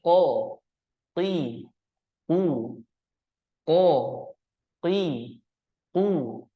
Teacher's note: makhrajnya terletak pada pangkal lidah ke arah langit-langit atas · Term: huruf q